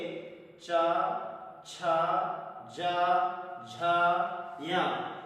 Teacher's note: तालु का मतलब हमारी जो जीभ है वो तालु में स्पर्श करती है और वहां से वायु पास होकर के आती है, वहां निकलती है ध्वनि। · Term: चा वर्ग